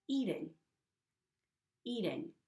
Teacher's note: Eating is me pronouncing the T in eating with a flapped T.